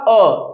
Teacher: अ को बोलने में केवल उतना समय लगना चाहिए जितना हमारा पलक झपक ने में समय लगता है अर्थात ये जो पलक है इसको झपक में जितना समय लगता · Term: मात्रा काल